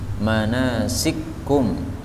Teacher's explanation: Kemudian manasikakum, ini boleh dibaca idgham sehingga kaf yang pertama masuk pada kaf yang kedua menjadi manasikum